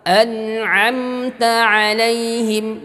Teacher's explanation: Kemudian harus nampak perbedaan mana alif mana ain. Alif dari tenggorokan yang paling jauh, ain dari tengah tenggorokan.